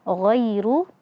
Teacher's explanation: dia juga memiliki sifat isti'la, terangkatnya pangkal lidah. Kemudian ghairu, ya sukun sebelumnya fathah, maka di sini ada mad lin dibaca lembut.